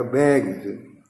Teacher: गा जो है घोष है, तो उसमें एस जो लगेगा वो जा हो जाएगा